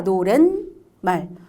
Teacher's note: 근데 발음을 해보니까 노랫말. 니은이 싹 들어간 거예요. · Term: 니은 소리가 한 번